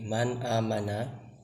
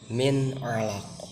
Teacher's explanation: Untuk idhar sendiri memiliki contoh seperti man amana, yang kedua seperti min alaq. Jadi di sana huruf nun mati yang berharokat sukun itu dibaca jelas.